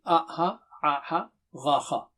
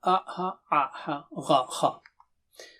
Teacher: You see, a, ha, gha, kha. From end of the throat, middle of the throat, upper throat. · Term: throat letters